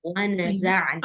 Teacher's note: Ain di tengah tenggorokan